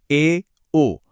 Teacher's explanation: अर्ध संवृत, जिसमें मुंह थोड़ा सा और खुलता है, ए, ओ।